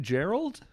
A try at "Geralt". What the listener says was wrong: No, it's with a T. It's Geralt. lean into the T.